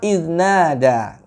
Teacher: nanya panjang tuh 2 harokat, bentuk daripada mat asli, ya. Lalu da itu 2 harokat juga, ya.